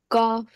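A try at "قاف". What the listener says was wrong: No, this is heavier. The O sound, remember? Cough.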